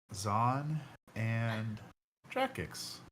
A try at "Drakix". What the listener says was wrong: No, that's not how you pronounce it. You pronounce it more with the inflection on like the last syllable.